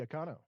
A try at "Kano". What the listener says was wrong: No, not Akano. Kano is how you say her daughter's name. Kuno.